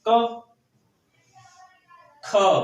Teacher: तो का को बोलने के लिए कम वायु निकली, और खा को बोलने के लिए क्या है, अधिक वायु निकली। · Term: महाप्राण